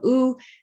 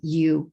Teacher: long u has two forms an unglided form ooh and a glided form you